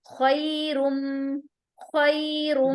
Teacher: یس میم غنہ بھی ہے اور را کے اوپر جو تنوین ہے اس کو ہم ملاتے ہوئے ادغام وتھ غنہ بھی کر رہے ہیں. ادغام ہو رہا ہے نون تنوین کے رول سے.